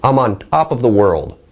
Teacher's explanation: when I use the unaspirated T sound it sounds a little weirder sounds like maybe a non-native pronunciation